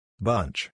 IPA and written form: bʌntʃ (bunch)